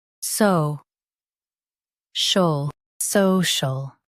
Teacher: Stress saw and keep shul soft. It's quick.